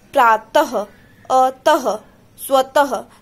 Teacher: तीसरा है विसर्ग अह। इसके उच्चारण में ह के समान ध्वनि आती है